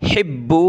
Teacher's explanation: با کو سخت کریں گے تشدید کی وجہ سے